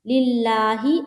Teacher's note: کھڑا زبر ہے، اس کو ایک الف کی مقدار کے باقدر کھینچیں گے